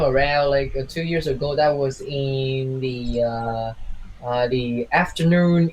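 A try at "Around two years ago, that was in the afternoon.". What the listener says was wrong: Fix the intonation a bit. When you say 2 years ago, usually in writing you would have a comma after it, right? your intonation should be similar to it. It's like, so 2 years ago, I was something.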